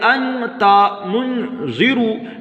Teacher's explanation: ناک میں اس نون کی آواز کو اور تنوین کی آواز کو چھپا کر پڑھیں گے. اور یہ ایسا اس وجہ سے ہو رہا ہے چونکہ قاعدہ ہے کہ تنوین یا نون ساکن کے بعد حرف اخفا میں سے کوئی بھی حرف آئے تو ناک میں آواز اخفا ہوتا ہے، یعنی ناک میں آواز کو چھپا کر پڑھتے ہیں، جس کی وجہ سے ہم پڑھ رہے ہیں.